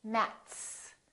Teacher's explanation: its voiceless so we put an s on the end